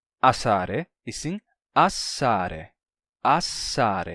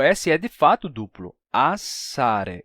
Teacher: dois s não é assare e sim assare assare ou seja o s É de fato duplo assare ele dura mais tempo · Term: s duplo